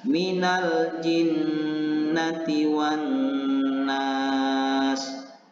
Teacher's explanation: yang bertasydid ini dengan cara menekan huruf nun yang bertasydid kemudian menahan nya selama dua harokat dan disertai dengan dengung